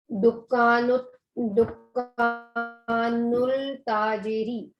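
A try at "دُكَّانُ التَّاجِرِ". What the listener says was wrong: दुकान नुल की लाम क्यों पढ़ रही हैं, तशदीद आ रही है ना.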